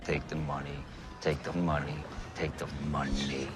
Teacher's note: you notice the way he presses that tongue tip in quite hard and lets a lot of pressure build up behind it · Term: T sound